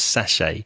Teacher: Now, mayo or mayonnaise often comes in a sachet, S-A-C-H-E-T. There is a T at the end, but we don't tend to pronounce it, so it's sachet.